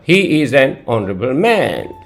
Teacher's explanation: H is silent here, you are not getting the sound of H consonant. Honorable is beginning with the sound of a vowel O